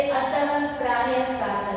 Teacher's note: विसर्ग में अह का उच्चारण होता है और आधे ह की साउंड आती है, आधे ह की आवाज आती है, जैसे अतः, प्रायः, प्रातः में।